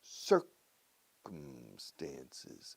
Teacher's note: four syllables but the first syllable is the stress circumstances and please close your mouth with the m circum circum